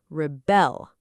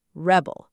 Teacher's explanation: Okay, the word here is a verb. So, the stress is on the second syllable, rebel, not rebel.